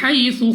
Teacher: Next ہمارے پاس یا ساکن سے پہلے زبر یا لین، بغیر کھینچے بغیر جھٹکا دیے پڑھیں گے، یعنی جلدی سے۔